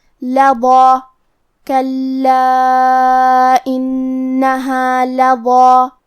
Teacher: تو کیونکہ اس کے پہلے حرف الضا ہے تو ہم ضا کو اور مد الف کو دونوں کو بھاری آواز میں پڑھیں گے